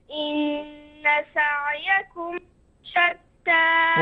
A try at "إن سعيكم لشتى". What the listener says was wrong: وضح اللام.